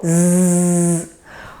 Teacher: au niveau des alvéoles, derrière les dents du haut